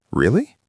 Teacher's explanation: Really? With a rising intonation shows interest and surprise.